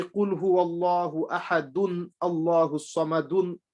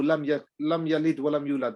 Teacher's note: I have to say the last vowel and I carry on. I don't make it sakin. As soon as you make it sakin, it becomes a stop.